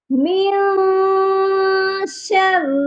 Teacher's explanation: من کے نون ساکن پر اخفا ہوگا کیونکہ آگے شین حروف اخفا ہے